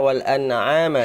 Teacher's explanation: Ama itu menebalkan ain, harusnya dia membaca wal an'ama, dia sifatnya ain itu tipis. Wal an'ama istifal. Istifal bukan isti'la, bukan wal an'ama, wal an'ama, ya.